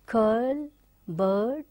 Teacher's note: central unrounded between half close and half open